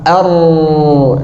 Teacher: Yang pertama tawassut bainiyah, yaitu adalah mengalirnya sebagian suara dan tertahan sebagian suara, dan dia punya sifat takrir, pengulangan, getaran pada huruf ra. Ini harus dijaga karena ini yang paling mencolok pada huruf ra.